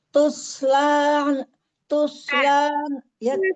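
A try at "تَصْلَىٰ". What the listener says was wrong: fathah. Ini fathah bukan dhamma. Tasla bukan tusla.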